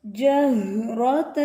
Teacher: یہ دو چشمی جو ہا ہے اس کو آپ نے سینے سے ادا کرنا ہے، حلق سے نہیں ادا کرنا، بھاری آواز ہوتی ہے